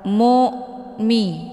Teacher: Ini merupakan hamzah sukun. Cara bacanya ditekan dan bunyi hamzahnya jelas atau terang. Mu'mi, bukan mu'mi, tapi dengan bacaan tipis.